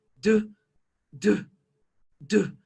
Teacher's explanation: if we hold or touch our throat dude dude dude we should feel vibration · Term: voiced sound